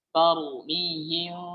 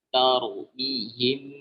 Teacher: kami mengamalkan itbaqu syafatain dengan merapatkan dua bibir. Tarmihim dengan merapatkan dua bibir.